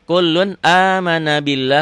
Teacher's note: lafaz Allahnya dibaca tipis